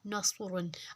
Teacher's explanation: اب اس میں سواد جو ہے تھوڑا سیٹی ہے اور ساتھ موٹا کرنا ہے، لفظ کو سواد کو موٹا کرنا ہے